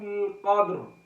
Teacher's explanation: قدری، یہاں پر جو را ہے، را کے نیچے زیر ہے، باریک کریں گے، مگر جب ہم وقف میں لے کر آئیں گے اس کو، را ساکن ہوگی، را سے پہلے دال ساکن ہے، اس سے پہلے زبر مل رہی ہے، اس لیے ہم اس کو موٹا کر رہے ہیں